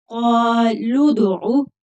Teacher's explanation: لام کو دال کے ساتھ ملا کر پڑھیں گے، قالوا ادعو، لام کو کھینچنا نہیں ہے، قالو نہیں پڑھنا کیونکہ واو ساکن نہیں ہے ، واو خالی ہے، قالوا ادعو لنا، نون کو کھینچ کر